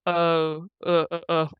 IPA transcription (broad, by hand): ʊ